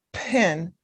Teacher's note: this word, pin, has aspiration. So you send out that puff of air